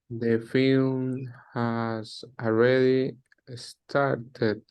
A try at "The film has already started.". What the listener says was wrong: Yes, very good.